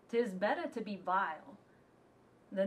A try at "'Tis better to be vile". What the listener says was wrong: You said it's better to be vile this last time.